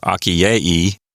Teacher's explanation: The genitive singular has a long E and a long I next to each other. So we have akiei, or something like that, for the genitive singular.